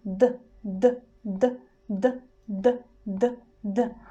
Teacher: we are touching the teeth but we do it very fast we just touch and move back